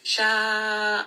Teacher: So this is a 4-count mad. And then the name of Allah here is going to be heavy because the letter before has a fatha.